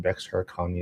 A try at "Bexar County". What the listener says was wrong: You're you don't pronounce the X. Just Bear County.